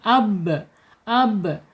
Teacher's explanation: Kemudian bihi ya ba asyafatain dua bibir ya dua bibir kemudian di sifatnya mempunyai sifat asyiddah tertahannya suara ketika dia sukun